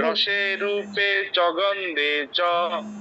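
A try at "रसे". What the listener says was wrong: ঠিক আছে, দন্তস্বর উচ্চারণটা একটু ঠিক করতে হবে। রসে নয়, রসে, রসে সদা, ঠিক আছে?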